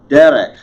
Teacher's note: Notice the accent on the first syllable.